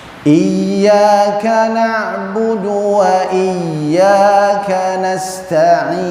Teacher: Nggak boleh terputus suaranya, karena ya itu ada sifat rakhawah atau rikhawah. Dia harus terus mengalir.